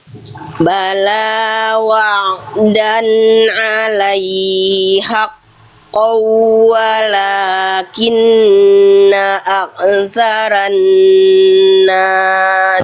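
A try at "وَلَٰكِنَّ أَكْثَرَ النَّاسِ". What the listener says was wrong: Tasdidnya nggak idgham bigunanya nggak ditahan ya Bun. Tahan.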